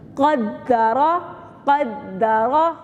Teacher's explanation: قاف دال زبر قد، دال زبر دا، قد. را زبر را، را کو پھر موٹا کرنا ہے، پھر موٹا ہی کرنا ہے